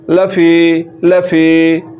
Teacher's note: لام کے اوپر زبر ہے تو زبر کو لمبا نہیں کرنا زبر کو لمبا کریں گے تو الف کی اواز نکل نکلے